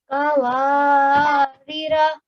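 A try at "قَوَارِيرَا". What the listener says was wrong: Don't rush through the ya, because this ya is also ya mad. Previous letter has a kasra. So prolong this for just as long as the alif mad. Both of them are mad letters.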